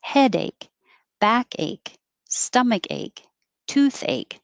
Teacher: anything that's an ache will put the emphasis on the first part